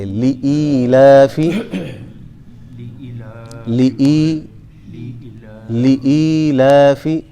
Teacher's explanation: پہلے لام کو کھینچیں گے نہیں اور ای کو تھوڑا کھینچیں گے